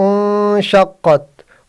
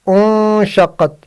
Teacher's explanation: نون ساکن کے بعد شن آیا، ادھر اخفا ہوگا